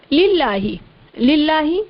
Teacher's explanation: اسم جلالت اللہ عز و جل کے لام سے پہلے زیر ہے، یہاں اس لام کو باریک پڑھیں گے